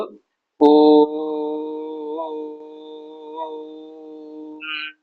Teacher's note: तो हम ओ शब्द को जो है इतना लंबा तीन मात्रा रूप में खींचेंगे। जैसे हम ओम का उच्चारण करेंगे तो ओ, इस प्रकार से इसको और लंबा खींचेंगे, तो अभी तो नहीं कर सकते। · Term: प्लुत